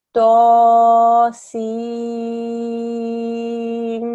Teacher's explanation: There'll be ghunna on the meme for 2 seconds because it's a meme mushaddad, and there'll be joining.